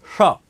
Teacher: इसमें सीटी निकलती है तीनों सयो का उच्चारण अलग होता है पहला जो श होता है जिसको तालव्य स कहते हैं वो जीवा कहां जाती है तालू की ओर